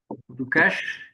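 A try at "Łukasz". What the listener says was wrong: It's Wukash. Wu is like L with specific pronunciation. So Wukash.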